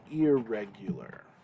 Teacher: That noon, that N, would assimilate into the next letter, and we would say irregular.